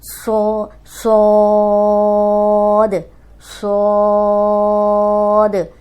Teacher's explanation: یہ سیٹی والا حرف ہے اور موٹا بھی حرف ہے